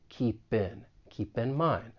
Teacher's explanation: we can link that final consonant sound in keep with the beginning vowel sound in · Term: linking